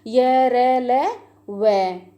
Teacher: इनका उच्चारण करते समय जीभ मुंह के किसी भाग का पूरी तरह स्पर्श नहीं करती। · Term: अंतस्थ व्यंजन